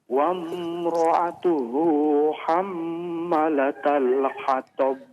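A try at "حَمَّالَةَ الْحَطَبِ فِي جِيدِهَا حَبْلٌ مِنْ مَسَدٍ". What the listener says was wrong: Maknya dipanjangkan Pak ya.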